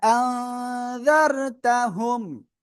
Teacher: আনজারতাহুম, হামজা জবর আ, হামজা নুন জবর আং, নুন সাকিন এর পরে ইকফার অক্ষর জাল আসছে, আমরা কি করব? নাকের ভিতরে নিয়ে গুণনা করব।